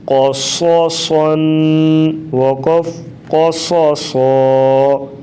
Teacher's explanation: زبر قا، صاد زبر صا قصا، صاد دو زبر صن قصصن، قاف بھی موٹا اور صاد اور آگے پھر صاد، ان تینوں حروف کو خوب موٹا کر کے پڑھیں گے